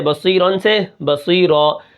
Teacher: ہم دو زبر کی تنوین کو، یہ دو زبر جو ہے ہم اس کو الف کے ساتھ بدل دیں گے حالت وقف میں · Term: وقف بالابدال